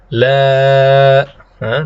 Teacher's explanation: La, pita suaranya di bawah la memenuhi rongga tenggorokan, memenuhi rongga mulut, kemudian keluar. Inilah alif maddiyah. La.